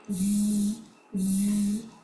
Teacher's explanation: The the zal has a buzzing sound.